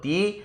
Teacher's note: এই তিথি শব্দটি যদি উচ্চারণ করি তাহলে এক্ষেত্রে দুবার ঝোঁক পড়বে এক হলো তি আর দ্বিতীয় হলো থি তি যদি বর্ণ বিশ্লেষ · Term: মুক্তদল